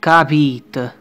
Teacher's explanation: The schwa sound at the end of the word are shorter, sometimes even silent. For example, the word understood, capite, becomes capite. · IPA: /ə-/